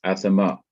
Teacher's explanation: This is hatef or katef pathak, which is a hurried pathak. So you don't stay long over the aleph, you hurry to the last syllable. So it's athama.